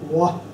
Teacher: ਥੋੜੀ ਜਿਹੀ ਊ ਵਾਲੀ ਆਵਾਜ਼ ਆਉਣੀ ਹੈਗੀ